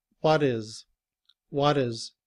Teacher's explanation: when it's combined with the word what, the letter T becomes the sound of the letter D. And we say, what is?